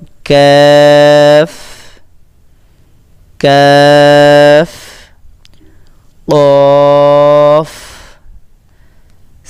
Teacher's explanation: কাফ উচ্চারিত হয় জিহ্বার গোড়া থেকে একটু আগে বাড়াইয়া তারপর উপরে তালুর সঙ্গে লাগাইয়া